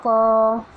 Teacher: قاف زبان کی جڑ کو چھوٹی زبان کے پیچھے کے حصے سے لگانے سے ادا ہوتی ہے، اور کیونکہ قاف حروف مد مستعلیہ میں سے ہے اسے موٹا پڑھیں گے۔